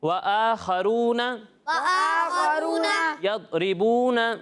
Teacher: ضاد میں آواز جو ہے وہ لوٹتی ہوئی محسوس نہیں ہوگی